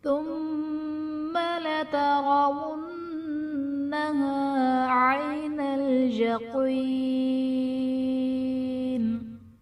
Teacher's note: ثم میں میم مشدد ہے، یہاں پر غنہ کر کے پڑھیں گے۔ لترونها میں را پر زبر ہے، را کو پر پڑھا جائے گا، نون مشدد ہے، یہاں پر غنہ کر کے پڑھیں گے۔